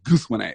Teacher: major stress on the first syllable